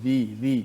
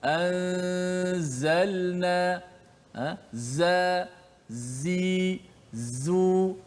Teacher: Tapi huruf zai dia kena bunyi jelas, anzalna, za, zi, zu. Dia keluar daripada antara kedua-dua gigi kita, keluar sifat safi itu apabila menekan makhraj huruf zai. So sifat safi itulah suara desiran yang kuat.